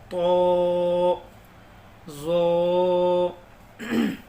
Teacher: تو جو ہے یہ بھی تھوڑا موٹا پڑھا جائے گا اور زو بھی موٹا پڑھا جائے گا. زبان کو اوپر کے تالوں میں لگانا ہے اور موٹا پڑھنا ہے.